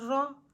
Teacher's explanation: را کے اوپر زبر ہے، زبر کو ہم بغیر کھینچے بغیر جھٹکا دیے معروف اور متوسط طریقے سے پڑھیں گے، اور را کے اوپر زبر ہونے کی وجہ سے را کو ہم موٹا پڑھیں گے، جیسے را زبر را، پیچھے سے ملا کر پڑھیں لی تو را۔